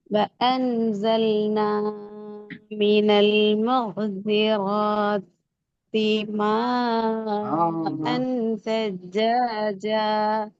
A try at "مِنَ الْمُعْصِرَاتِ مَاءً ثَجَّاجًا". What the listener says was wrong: மௌசிராத்தியில நிப்பாட்டிட்டு போற மாதிரி போகுது மீம நீட்டுறது போகுது மீம 3 செகண்ட் நிட்டணும் அன்